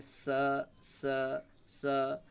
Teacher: दंत स, दांत के नीचे हल्का सा जीभ को सटाएंगे